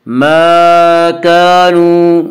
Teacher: واو مدہ وہ واو جو ساکن ہو اور اس سے پہلے پیش ہو، واو مدہ کو 1 الف کے برابر کھینچ کر پڑھیں گے